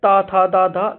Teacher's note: जीभ हमारी ऊपर वाले तीथ पे ऊपर वाले दांत में टच हो रही है तो ये दंत दंतीय या दंत से उच्चारण स्थान हो जाता है।